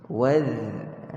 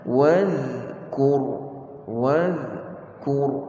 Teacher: Za ni satu huruf yang keluar daripada hujung lidah kita, sentuh hujung gigi hadapan kita, gigi kacip kita. Waz, dan dia huruf yang nipis, istifal.